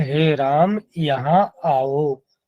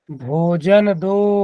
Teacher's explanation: जो हम ओ वर्ण का उच्चारण कर रहे हैं यह प्लुत होता है